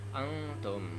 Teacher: ikhfa, pada saat nun mati bertemu dengan ta, maka dibaca samar